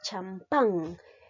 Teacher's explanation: La mayor fuerza de voz lleva en la sílaba pan. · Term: Aguda